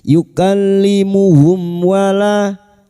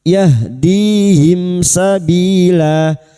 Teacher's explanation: Idhar syafawi. Mim sukun dibaca jelas tanpa mendengung.